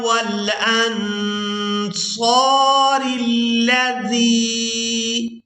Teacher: زال کو یا ساکن کے ساتھ ملاتے ہوئے کھینچ کر ادا کریں گے۔